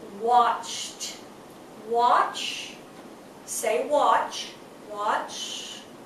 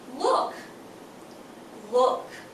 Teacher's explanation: no vibration so Eed D sounds like a t